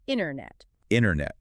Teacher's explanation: In North American English, when a T follows an N inside a word, we almost always drop the T entirely to keep the cursive flow going. So we don't say internet, we say internet.